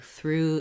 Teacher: if that helps you know that that has that tense OO sound